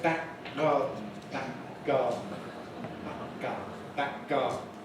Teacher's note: We don't release the first k. We don't say back garden.